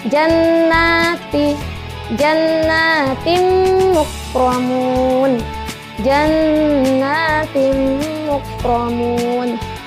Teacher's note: Jadi kalau untuk nun bertasydidnya dengung lalu panjang.